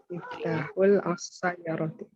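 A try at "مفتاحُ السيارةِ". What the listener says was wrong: Alif lamnya syamsiyah. Jangan dibaca lamnya. Miftahus. Miftahus sayyara. Miftahus sayyarati.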